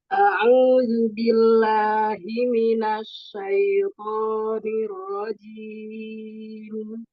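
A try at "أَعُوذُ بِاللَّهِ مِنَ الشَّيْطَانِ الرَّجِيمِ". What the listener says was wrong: Huruf shin ya, Umi. Asya, makhrajnya itu tengah lidah ya.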